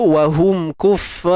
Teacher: ra tu kita matikan dia dengan tafkhim, dengan tebal